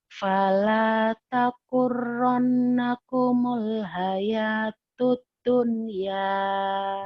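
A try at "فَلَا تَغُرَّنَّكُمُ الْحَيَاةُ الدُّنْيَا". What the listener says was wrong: Masih lagu Jawanya tuh kayaknya tuh ya. Kayaknya jadi agak sepet-sepet gitu.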